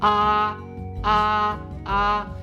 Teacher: flat T here here here so we'll say ah ah ah it's a little bit higher on your vocal registry than your normal voice and it's going to be flat that is the first tone